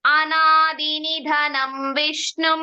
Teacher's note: ನಿಧನಂ ಧಾ ಮಹಾಪ್ರಾಣ ಬರಬೇಕು